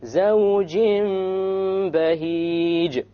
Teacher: We have a Tanween followed by a Ba. So we convert the noon into a meme. زَوْجٍ بَهِيجٍ.